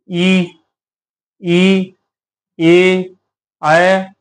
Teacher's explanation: स्वर ई ई ए ऐ इस तरीके से आप बोलेंगे तो आपको महसूस होगा कि जीभ के आगे के हिस्से का हम प्रयोग कर रहे हैं यानी अग्र स्वर